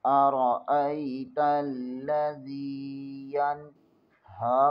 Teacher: نون ساکن کے آگے ہا حروف حلقی میں سے ہے، یہاں غنہ نہیں ہوگا، اظہار ہوگا